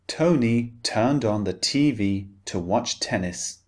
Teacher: the T the unvoiced sound in British English is always very distinct it's very clearly pronounced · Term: T unvoiced sound